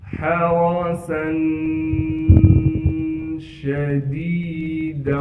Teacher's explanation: سین پر 2 زبر ہونے کی وجہ سے سین میں اخفا یعنی غنہ کیا جائے گا۔ حَرَسًا شَدِيدًا، شین کی آواز کو صاف کر کے ادا کریں گے، دال کے بعد یا مدہ ہونے کی وجہ سے دال کو ایک الف کے مقدار کھینچ کر پڑھیں گے، اس دال کو ہم واو سے ملا دیں گے غنہ یعنی اخفا کے ساتھ۔